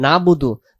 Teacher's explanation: তাহলে আইন অক্ষরটা বাদ চলে গেছে। কেন? এই আইন অক্ষরটা উচ্চারণ হয় নাই।